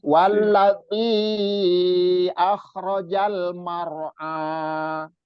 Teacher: zi-nya ini dipanjangkan 4 sampai 5 harokat. Itu mad jaiz munfasil.